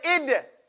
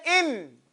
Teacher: So here, with dal, say id. It's shidda. You hit it and you punch it, right? Now you're saying in. It's tawassut, and you're not punching it. You're placing, and you're letting it get full contact.